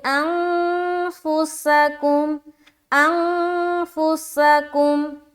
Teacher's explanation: کیونکہ یہ جو فا حرف ہے نا، حروف اخفا کے جو 15 حرف ہیں اس میں سے ایک ہے، تو یہاں پر ہم اخفا کریں گے، یعنی کہ نون ساکن کی آواز کو ناک میں چھپائیں گے